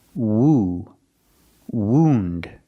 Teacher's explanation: use the long ooh sound like food and Moon